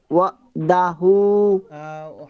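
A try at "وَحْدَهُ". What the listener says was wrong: হা, হা উচ্চারণ করতে হবে না। হা উচ্চারণ করে। হা ছোট হা হয়ে যাচ্ছে।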